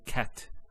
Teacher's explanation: the T doesn't have any vowel associated with it. It's actually just a stop on the T.